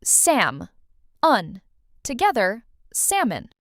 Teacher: This word has a silent L.